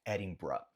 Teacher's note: no final é como se fosse um B-R-A, ou um B-R-U, no sentido de schwa, né? No som de schwa no inglês.